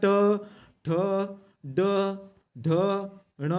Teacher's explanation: जे वर्ण उच्चारत असताना जिभेचा शेंडा मृदेला जाऊन भिडतो त्याला मूर्धन्य वर्ण असे म्हणतात